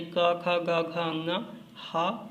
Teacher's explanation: आ का वर्ग यानी क, ख, ग, घ, अंगा, हा और विसर्ग, इन सब का उच्चारण स्थान कंठ है